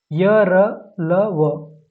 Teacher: उनका उच्चारण जो होता है स्वर और व्यंजन के बीच का होता है। तो उसको हम लोग जो है अंतस्थ व्यंजन कहते हैं।